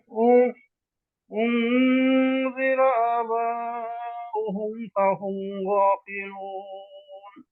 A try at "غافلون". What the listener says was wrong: ফাহুম, গ, গ, গয়নটা একটু ভিতরে, গলার এই যে এখানে গ, জিহ্বার গোড়াটা ভিতরে নামাই দেন, ভিতরে ঢুকাই দেন, গ, গ। ফাহুমে কিন্তু গুণনা নাই, মনে আছে এই যে মিম সুকুনের, মিম সুকুন পরে কি আসছে, গয়ন আসছে, গুণনা নাই, হ্যাঁ। ফাহুম গাফিলুন,